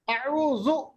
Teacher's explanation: ذال کو بڑا نرم پڑھنا ہے کیونکہ ذال کا مخرج جو ہے زبان کی نوک اور ثنائے علیہ اوپر کے 2 دانت ان کے ساتھ، ہاں ثنائے علیہ کا کنارہ، ٹھیک ہے.